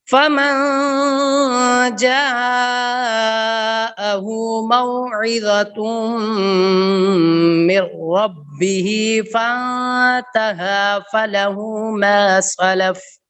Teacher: موعظة की वा जो है ये ठहरिए موعظة की वा बारीक हो गई है